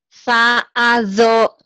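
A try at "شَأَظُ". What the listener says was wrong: Sa, shin. Sha, a, zo. Sha. Sa ujung lidah. Sin ya.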